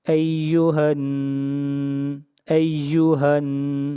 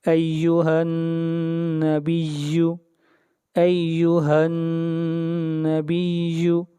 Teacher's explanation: ہا کو ملائیں گے نون کے ساتھ اور نون کے اوپر غنہ ہوگا